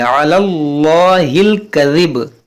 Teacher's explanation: یہ عین کو وسط حلق سے ادا کریں گے اور اسلام کو موٹا پڑھیں گے علی اللہ الکذب، ان الذین